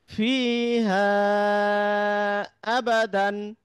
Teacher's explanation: মূল মাদের পরের শব্দের শুরুতে যেহেতু হামজা চলে আসছে, তাহলে এই মূল মাদটাকে 3 আলিফ টেনে পড়তে হবে। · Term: মাদ্দে মুনফাসিল